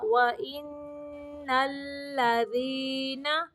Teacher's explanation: یہاں پہ نون مشدد ہے تو غنہ ہوگا